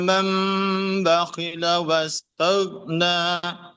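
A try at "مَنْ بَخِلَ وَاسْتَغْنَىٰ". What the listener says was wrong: PR-nya masih di goin. Nah, goinnya masih tertarik ke belakang itu bibirnya yang pojok sini. huruf-huruf tebal yang sukun itu, ya ini saya berikan catatan tambahan ya, untuk menghindari ya, menghindari suara yang cenderung menipis ya.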